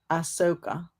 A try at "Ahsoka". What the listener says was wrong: No, no. Just take the H out. Ahsoka. put your southern flair in there. Ahsoka.